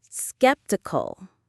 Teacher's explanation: Skep-T-Cul. The stress is right at the very beginning on skep.